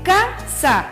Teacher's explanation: K sería la penúltima sílaba quiere decir que en este caso la fuerza de voz o el acento está en la penúltima sílaba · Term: acento prosódico